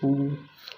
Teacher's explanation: इनके उच्चारण करते समय होठ जो है गोल हो जाता है, ऊ बोलेंगे तो होठ गोल हो जाएगा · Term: वृत्ताकार